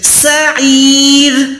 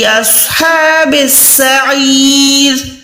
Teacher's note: را زیر ہے لیکن را ساکن ہو جائے گی، اچھا یہ پتلی را ہے ، را پہ زیر ہے تو را پتلی ہے یعنی باریک